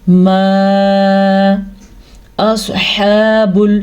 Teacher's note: میم کے اوپر جو مد آپ کو نظر آ رہی ہے تقریباً اس کو 2.5 سے 3 الف کے برابر لمبا کرتے ہیں. دوسرے الفاظ میں آپ اس کو 2 سیکنڈ تک لمبا کر سکتے ہیں.